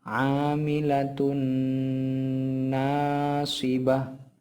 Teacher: pada kalimat huruf tun itu harus didengungkan atau dilamakan suaranya seperti itu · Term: idgham biguna